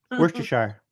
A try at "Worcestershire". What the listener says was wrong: Where's the sh come from? Why does everybody do that? Worcestershire.